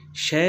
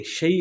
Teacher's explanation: हरूफ लीन को बग़ैर खींचे, बग़ैर झटका दिए नरमी से मारूफ पढ़ते हैं। ये इनका कायदा कुलिया है कि इसको पढ़ेंगे लेकिन नरमी से पढ़ेंगे और मारूफ पढ़ेंगे, यानी इसको शय नहीं पढ़ेंगे, शई पढ़ेंगे। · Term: या लीन